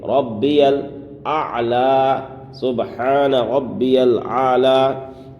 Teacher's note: سبحان ربی الاعلی، سبحان، یہاں پر ہا کو ظاہر کرنا ہے، سبحان ربی ربی، یہاں پر تشدید ہے با میں، اس لیے تھوڑا سختی کریں گے